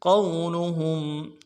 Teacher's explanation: فلا يحزن کاف کو نون سے ادا کریں گے، يحزنك فلا يحزنك قولهم قوف کو موٹا ادا کرنا ہے اور واو کے ساتھ ملانا ہے، واو لین ہے بغیر کھینچے پڑیں گے